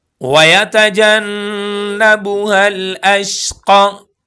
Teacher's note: नून पर गुन्ना होगा। नून मुशद्दद है।